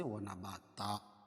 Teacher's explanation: 2 زبر کی تنوین پر وقفہ کی صورت میں 1 زبر کے قائم مقام الف لائیں گے اور دوسری زبر اپنی حالت پر باقی رہے گی.